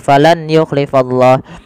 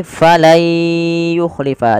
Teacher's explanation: Diganti suara nunnya menjadi suara ya. Kemudian langkah kedua ditahan dengan gunnah.